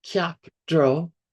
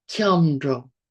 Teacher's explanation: when we stick it together, the pronunciation changes. It's not kyapdro, it's kyamdro. Because there is this little leading apostrophe, which means it's an open vowel.